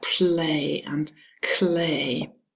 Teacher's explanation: instead of hearing a voiced l, you hear a hissing sound, some friction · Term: devoiced allophone of the l